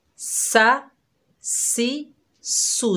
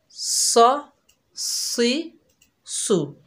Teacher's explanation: सीन की सीटी बारीक होगी, सौद की सीटी मोटी होगी